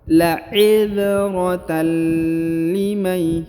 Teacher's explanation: huruf tanwinnya menjadi hilang dan melebur ke huruf lam, ditahan dan ditekan 2 harokat